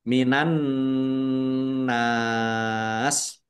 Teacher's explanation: alif lam samsiah karena tidak dibaca, langsung masuk ke huruf berikutnya yaitu nun, ditandai nunnya ada tasdidnya.